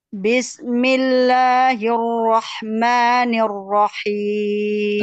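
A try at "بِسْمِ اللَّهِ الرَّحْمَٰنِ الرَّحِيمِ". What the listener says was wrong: Nah, sinnya agak mengalir sedikit ya, mengalir. Bismillah gitu. Ya, bismillah itu sin itu terdapat sifat rakhawah. Rakhawah itu suara yang mengalir. Tidak bismi. Kalau bismi itu sedikit tertahan. Bismi. Kemudian bunyinya tipis betul. Nah, sama bismillahirrahmani. Nah, rahmani juga. Bismillahirrahmanirrahim. Jadi lebih diperjelas harkat kasrohnya.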